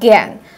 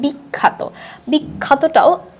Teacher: বিখ্যাতটাও আ এর মতো উচ্চারণ না হয় এ এর মতো উচ্চারণ হয়। অর্থাৎ দেখে মনে হয় যেখানে কি আছে আকার আছে, কিন্তু উচ্চারণের সময় এ এর মতো করে উচ্চারণ হয়ে থাকে। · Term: সংবৃত উচ্চারণ